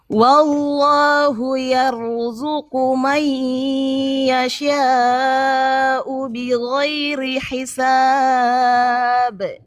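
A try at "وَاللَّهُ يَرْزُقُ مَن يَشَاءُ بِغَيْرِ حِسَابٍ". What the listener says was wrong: Alhamdulillah, bagus banget bacaannya.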